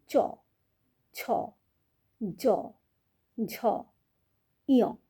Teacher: দাঁত যে রয়েছে না দাঁতের ঠিক উপরের অংশটা হচ্ছে তালু। আমাদের জীবটা যখন এই তালুতে স্পর্শ করছে তখন আমরা চছ উচ্চারণ করছি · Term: তালব্য বর্ণ